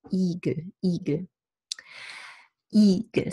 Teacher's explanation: It's a flat static vowel with tension in the palatal muscles. It's not a relaxed sound as English green.